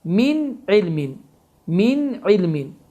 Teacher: Həmin sükunlu nundan sonra ay hərfi gəlmişdir və biz də bayaq qeyd etdik ki, ayın hərfi izhar hərfidir. Məhz izhar hərfi olduğu üçün n səsi açıq-aşkar şəkildə oxunur